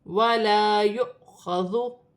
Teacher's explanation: خا حروف حلقی میں سے ہے، حلق سے ادا کیا جائے گا ، ذال نرمی والا حرف ہے، نرمی سے ادا ہوگا، نون